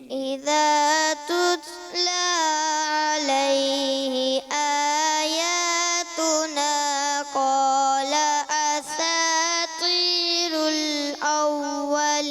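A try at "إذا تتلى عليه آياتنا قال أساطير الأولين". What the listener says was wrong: ابھی بھی تھوڑا سا عین مکس محسوس ہوتا ہے، کلیئر کریں حمزہ کو، ٹھیک ہے نا؟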